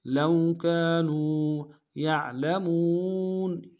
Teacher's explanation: لو كانوا يعلمون یا کو عین کے ساتھ ملانا ہے، عین کو موٹا ادا کریں گے، لام کو نرم سے ادا کریں گے، میم کو واو کے ساتھ ملانا ہے، واو مدہ ایک الف میں کھینچیں گے، نون کو نرم سے ادا کریں گے۔